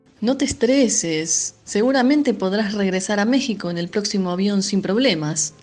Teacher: se puede apreciar un alargamiento marcado de las vocales tónicas, es decir, las vocales que reciben la mayor fuerza de la pronunciación de una palabra